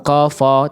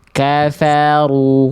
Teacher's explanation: Jangan kafo tapi kafaru. Nah, yang pakai pangkal lidah ro-nya aja. Ya, kafanya kafa tipis, ringan, relax.